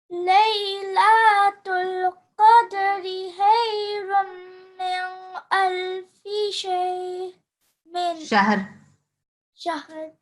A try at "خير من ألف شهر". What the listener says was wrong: And I think here you said khayrum min, you use a not light nasal sound, but it's a tricky one, this one, because actually this one you don't have to do that because you see there's alif afterwards.